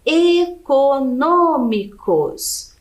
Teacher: econômicos então é a antepenúltima sílaba aqui é a mais forte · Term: proparoxítonas